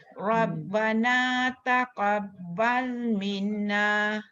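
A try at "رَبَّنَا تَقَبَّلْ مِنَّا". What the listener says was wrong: dengung ni mesti 2 harakat ni Datuk. Minna, dia tak boleh minna. Bila minna 1 harakat. Minna. Maksud saya nak betulkan Datuk baca tadi.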